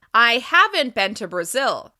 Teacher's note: I'm stressing the negative contraction haven't in order to answer the question I was asked previously.